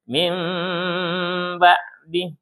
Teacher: Yang berubah huruf N-nya. Bukan min lagi, tapi mim. Nah, dia punya hak dengung.